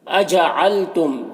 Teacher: میم میں اظہار شفوی ہو رہا ہے تو اسے جلد پڑھنا ہے